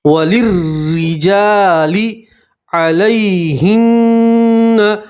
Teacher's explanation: را کے نیچے زیر را کو باریک پڑھیں گے, یا لین ہے اس لیے کھینچیں گے نہیں, جلدی سے پڑھیں گے, نون کے اوپر تشدید ہے نون میں گننا کریں گے.